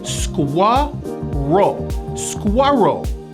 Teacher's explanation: there's a strong hidden w sound in this word and also a very strong r